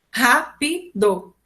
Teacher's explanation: A antepenúltima sílaba é mais forte. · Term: proparoxítona